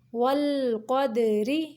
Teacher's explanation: قاف موٹا پڑھیں گے اور دال کو قلقلہ کریں گے